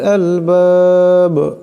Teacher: বা সাকিন করলে আওয়াজটিতে কলকলা করিয়া পড়তে হবে